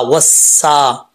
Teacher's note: वाव सीन ज़बर वस, सीन खड़ा ज़बर सा, वस्सा। वाव को जब सीन से कनेक्ट करेंगे तो बीच में अलिफ और लाम गिर जाएगा। सीन उसमें से हुरूफ सफ़ीरिया में से है तो सीटी के साथ पढ़ा जाएगा, लेकिन बरीक पढ़ेंगे, पुर नहीं पढ़ेंगे।